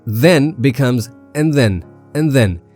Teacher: and reduces to a single N sound.